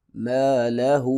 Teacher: الٹا پیش اور مد ہے، 3 الف کے برابر لمبا کریں گے